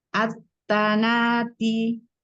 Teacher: Lebih syiddah lagi dalnya.